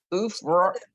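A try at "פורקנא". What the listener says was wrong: the oo is by itself, oo, then fur. It's the oo, fur. It's hard, I know, but fur, you're the foo and the resh, fur, kana.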